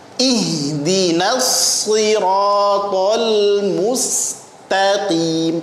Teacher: ta-nya tipis, qaf-nya tebal